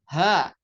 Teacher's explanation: Ini yang berat Ha keluar nafas juga